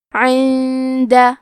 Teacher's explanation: کلمت عند میں نون ساکن ہے، پھر حرف الدال ہے. دال حروف الاخفاء میں سے ہے، تو ہمیں یہ حکم کو غنہ کے ساتھ ادا کرنا ہے